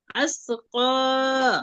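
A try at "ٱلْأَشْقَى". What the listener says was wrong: আসনা ফোটা শিন, শিন শক্ত করে, আশকা। না, বারবার সা পড়তেছে না, ফোটা শিন, তিন দাঁতের উপর তিন শক্ত হলে শিন হয়, হ্যাঁ।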